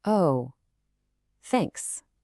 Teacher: with a falling tone and you know immediately that's sarcasm